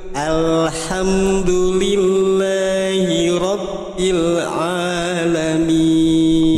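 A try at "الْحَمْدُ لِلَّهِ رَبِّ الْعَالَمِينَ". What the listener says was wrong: Bagus. Lanjut.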